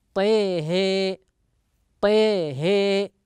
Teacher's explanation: فيقرأها، ويميل أيضا الهاء لأن الهاء من حروف حي طهر فيقرأها طيه طيه بإمالة الطاء وإمالة الهاء